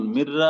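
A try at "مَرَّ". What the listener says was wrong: আচ্ছা, আপনি যে বললেন মিম র জবর, জবরের উচ্চারণ কি জেরের মতো হয়? আপনি তো বলছেন জবর উচ্চারণ তো হয়েছে জেরের মতো। মিম র জের মির হইতো, মির রতান। মিম র জবর মার, মিম জবর মা না ভাই?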